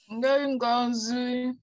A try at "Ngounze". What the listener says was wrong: Non, c'est pas Ngozu, c'est Ngounze. Ngounze.